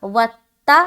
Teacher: ता को एक बार और पढ़ा क्योंकि ता के ऊपर शद है और शद वाले हर्फ को 2 मरतबा पढ़ा जाता है।